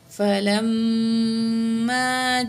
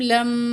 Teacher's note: واو زبر وا، لام زبر میم، لم. لام کو میم مشدد کے ساتھ ملائیں گے اور میم میں مشدد میں غنہ ہوگا